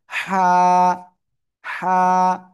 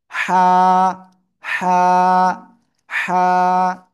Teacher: গলার ভিতরে হালকা চেপে মুখ দিয়ে হালকা বাতাস বের করে আপনাকে উচ্চারণ করতে হবে। হা, হা, বাতাস বের করে, হা, হা, হা।